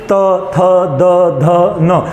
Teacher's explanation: आप अगर इस वर्ग को बोलेंगे तो जीभ जो है वो टच करेगी दांत को, जैसे त थ द ध न, यानी कि आपकी जीभ आपके दांत को टच करेगी, तो ये वर्ग क्या बना आपका दंते।